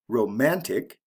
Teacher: romantic the second syllable is emphasized